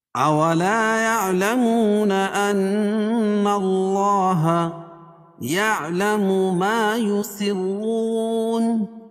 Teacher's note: ان اللہ نون مشدد ہے غنہ ہوگا اور اللہ کے لام سے پہلے زبر ہے تو اللہ کا لام پور پڑا جائے گا